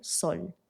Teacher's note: tenemos la S sorda, que es la que usamos siempre en español